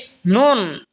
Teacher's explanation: নুন জিহ্বার আগা তার বরাবর উপরে তালের সঙ্গে লাগা উচ্চারণ হবে নুন